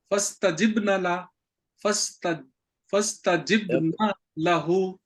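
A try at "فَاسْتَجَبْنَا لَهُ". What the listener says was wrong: نہیں جیب نہیں ہے نا، جیم کے اوپر زبر ہے، فاستجبنا لہ،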